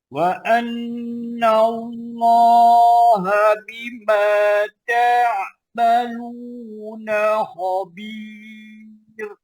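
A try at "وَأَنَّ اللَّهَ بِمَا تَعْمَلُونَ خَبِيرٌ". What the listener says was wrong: Dia masih lagi terlucut pada na khabir. Kalau kita bunyi bimaaluna khabir. Tapi boleh dah tu.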